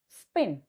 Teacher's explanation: in the spin it is very smooth spin so it is not aspirated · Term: nonaspirated